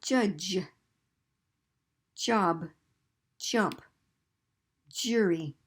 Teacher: and Ja has a D kind of fancy Z combination ja it's like two sounds blended very quickly